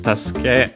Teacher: Tasuke on its own, yes, accented on the last syllable